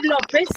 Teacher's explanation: López tiene la mayor fuerza de voz en lo. No se le escucha entrecortada.